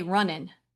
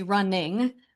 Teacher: When we pronounce running, some people might say runnin'. They're losing that ng sound in their mouth. So running, if you say that, you can feel the back of your tongue hitting the soft palate up there.